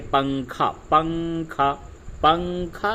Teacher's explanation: اخفا کی مثال جیسے اردو میں ہم لوگ بولتے ہیں پنکھا، پنکھا، پنکھا میں جیسے نون کی آواز کو ہم ناک سے نکالتے ہیں